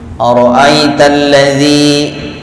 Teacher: zi dibaca panjang, disebutnya mad tabi'i, mad panjang tabi'i asli atau murni